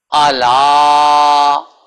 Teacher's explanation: حمزہ لمبا نہ ہونے پائے، لام کو لمبا کرنا ہے مد کی وجہ سے